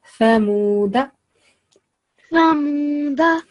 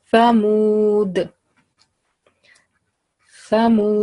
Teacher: when tip of our tongue touches the upper teeth, and flow of air come first, and then the sound of the letter. So bit thin sound it has, like th sound in English.